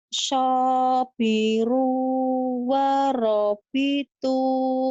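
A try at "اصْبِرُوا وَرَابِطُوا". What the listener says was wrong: So-nya panjang, ru-nya panjang, ro-nya ya lagi.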